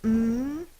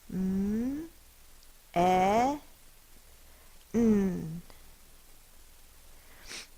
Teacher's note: the first sound is M my lips are closed